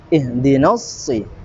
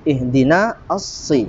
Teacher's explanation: ihdina sudah tidak menjadi panjang lagi karena dia langsung masuk ke Idgham Syamsiah karena di sini ada al-ta'rif bertemu dengan huruf shod ya hukumnya